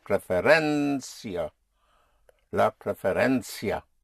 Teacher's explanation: you push down on the penultimate syllable, on the syllable before last.